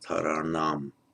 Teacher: Subdotted, it becomes retroflex because within the same word, if an n follows an r, it makes it retroflex, taranam. And the same, by the way, happens with the letter sh.